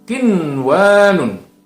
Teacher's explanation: Tidak dibaca mendengung, tapi justru harus dibaca dengan terang. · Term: idhar mutlak